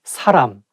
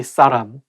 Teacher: it should be a little bit softer S sound and say 사람